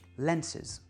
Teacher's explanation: je garde l'accent sur le mot original qui est lens et le -es du pluriel est réduit